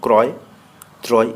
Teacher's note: এখানে র ফলাযুক্ত বর্ণের পরেও অকার ওকার হয় না